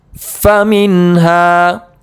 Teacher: نون ساکن کا اظہار ہوگا، نون ساکن کو ظاہر کر کے بغیر گنہ کے جلد پڑھیں گے۔